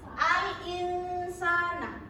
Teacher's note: Dan cara bacanya harus dengung dan samar. Betul. Yang termasuk karena bertemu dengan sin nun sukunnya. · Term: Ifa